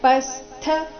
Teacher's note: ರಥೋಪಸ್ಥ ಪೋ ಮೇಲೆ ಆಘಾತ